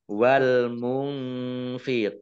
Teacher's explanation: Wal munfiina Alif lamnya Alif Lam qamariah ditandai lamnya dibaca sukun nun sukun bertemu dengan dengan huruf Fa bacaan Ikhfa dibaca samar-samar